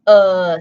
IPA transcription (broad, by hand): ə